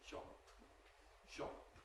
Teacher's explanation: So instead of saying shop, we get shop with an extra long P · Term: gemination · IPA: [ʃɒpp]